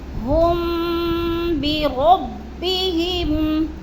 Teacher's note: آواز کو ناک میں چھپا رہے ہیں · اگر میم ساکن کے بعد حرف با آ جائے تو میم کی آواز کو ہونٹوں کے ساتھ چھپا کر غنے کے ساتھ پڑھیں گے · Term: اخفاء شفوی